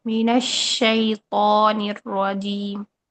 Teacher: من الشیطان ناک میں نہیں لے کے جانا